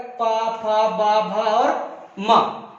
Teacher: ये ओंठ आपस में टक्कर कर रहे हैं, दोनों स्पर्श कर रहे हैं, इसीलिए हमारे क्या हो गया ओष्ठ।